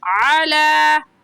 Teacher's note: علی میں لام کے اوپر کھڑی زبر ہے، کھڑی زبر کو ایک الف کی مقدار کھینچ کر پڑھتے ہیں تو کھینچیں گے علی۔